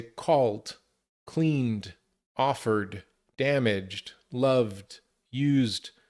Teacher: Where other consonants like L or N or R or G or V, it sounds more like a D sound. But again, it's fast. We don't separate. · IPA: /d/